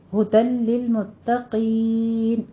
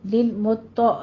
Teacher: ہدل لل میں ادغام بلا غنہ ہے، یہاں پہ ہم بغیر غننے کے پڑھیں گے